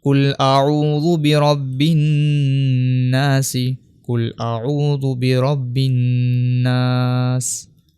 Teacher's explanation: آخر میں سین کے نیچے زیر ہے، اس زیر کو ہم وقف کرتے وقت ہٹا دیتے ہیں